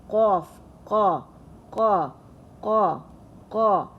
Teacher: This is the end part, the very deepest part of our tongue, which we feel like when our tongue, the end part of our tongue, just touches the upper part of our throat. So this qa is pronounced, and it's a heavy letter.